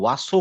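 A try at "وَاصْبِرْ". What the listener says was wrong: ওয়াসো না, ওয়াসবির কিন্তু সিনের মতো মুখটা খুলবেন না, গোল করে বলবেন ওয়াসবির।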